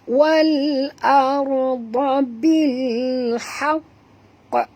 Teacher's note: Haqqi di sini qaf ada dua perempuan. Jadi kita kena bunyi yang mula-mula qaf yang mati dulu, kemudian barulah kita matikan qaf yang kedua. Sebab itu kena berhenti 2 second baru bunyi qa. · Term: qalqalah akbar